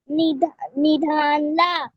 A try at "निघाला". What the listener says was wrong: निघाला. निघाला. घ है ना वो. निघाला. चुलीतून धूर निघाला. चुलीतून धूर निघाला.